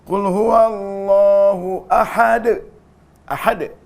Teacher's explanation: Jadi kalau dia wakaf berlaku namanya qalqalah kubra.